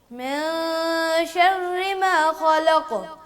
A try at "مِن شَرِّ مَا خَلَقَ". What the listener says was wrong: ما نہیں, ما من شر ما, ایک ہے ما, آواز ناک میں جا رہی ہے, یہ نہیں کرنی. من شر ما خلق,